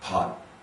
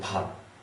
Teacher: we won't really say the T, pot. It'll just stop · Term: cut T